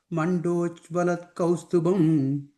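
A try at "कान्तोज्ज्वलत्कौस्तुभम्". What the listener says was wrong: A third line, Kanto, I think you said Mando or something that word. And after that comma, Kanto Jwalat Kaustubam.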